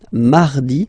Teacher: So you can hear that you don't pronounce it that strongly, this R. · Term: really soft